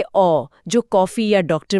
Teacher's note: यह ना तो पूरी तरह आ है और ना ही पूरा ओ। यह दोनों के बीच का एक एडप्टेशन है। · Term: आगत स्वर